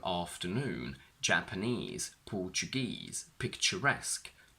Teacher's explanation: all of these words on their own have their stress on the last syllable, but when we combine them with a noun, the stress shifts to the front.